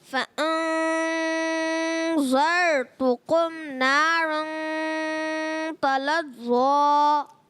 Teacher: را کو بھی پر کرنا ہے اور نارن اخفا کا غنہ بھی کریں